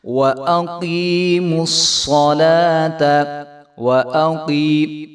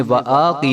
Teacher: حمزہ کو اوپر زبر ہے تو اس کو ہم نے لمبا نہیں ہونے دینا، اس کو ہم نے وَآقی نہیں کریں گے۔